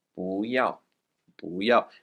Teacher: It will change its tone depending on what comes after it. So in front of a fourth tone, you want to make sure 不 is a second tone